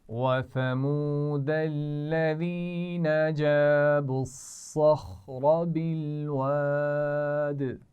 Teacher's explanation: جاب الصخر، آپ دیکھیے اس میں تینوں حروف جو آ رہے ہیں وہ موٹے ہیں، صخر، صاد، خا اور را پہ زبر ہے تو موٹا پڑھیں گے